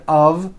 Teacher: we pronounce the word of with a voiced v